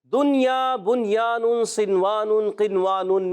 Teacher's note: ان چار کلمات میں نون ساکن کے بعد حرف جر معلوم ہے کہ کلمے میں آنے کی وجہ سے ادغام نہیں بلکہ اظہار مطلق ہوگا اور ان میں غنہ نہیں کریں گے